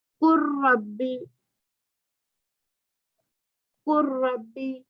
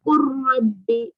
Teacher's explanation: لام کو ہم یہاں پہ نہیں پڑھیں گے، اس کو کس سے ملا دیں گے؟ را سے ملا دیں گے، تو پہلے والا جو حرف ہے وہ نہیں پڑھا جائے گا، قربی، را پڑھا جائے گا، قربی، علم، علم نخلقکم، اب یہاں پہ پہلا والا نہیں پڑھا گیا، دوسرا پڑھا گیا، یہی بہت آسان ہے۔ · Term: ادغام متقاربین